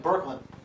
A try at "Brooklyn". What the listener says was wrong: It sounded like Birkland.